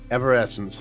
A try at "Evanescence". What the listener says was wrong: You're missing certain consonants. You're saying evanescence. It's evanescence.